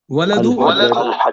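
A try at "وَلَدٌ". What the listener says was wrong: वलदुन, अल पहले अपने को वलदुन पढ़ना चाहिए, दो पेश तनवीन लगाना है, लास्ट में दाल के ऊपर पेश लगाना है।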